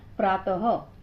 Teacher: विसर्ग, जो 2 बिंदुओं के रूप में अक्षर के बाद आता है और हल्का सा ह का प्रभाव देता है